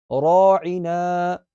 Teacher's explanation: را موٹی پڑی جائے گی یہاں